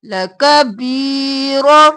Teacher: لَكَبِيرَةٌ لَكَ، جلدی سے بی کو کھینچیں گے، یا مدہ ہے، را زبر را موٹا اور جلدی سے ، لَكَبِيرَ، اور پھر تن نہیں کریں گے کیونکہ آگے حمزہ